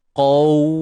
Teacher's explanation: huruf qaf ni tebal tuan puan. Kemudian di sebelahnya ataupun selepasnya terdapat huruf waw yang sukun. Jadi kat sini ada bacaan lin. Sifat lin, sifat lunak.